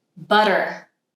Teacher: instead of holding the tongue there, D, I'm doing one little flap of the tongue and touching the alvolar ridge.